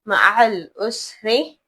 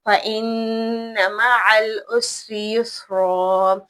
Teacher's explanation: اسری باریک پڑھنا ہے، یسرا پر پڑھنا ہے